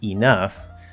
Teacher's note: with the first syllable reduced to uh true schwa which we commonly do the second syllable uses that upside down v